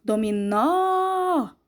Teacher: Dominó, eu abro muito bem a minha boca, abro a boca. Então, o acento seria o acento agudo, no nó, que é a sílaba mais forte.